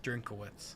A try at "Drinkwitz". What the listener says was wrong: Yeah, you see what you're saying? It's not a hard K. It's a little bit of a softer K. Drinkwitz?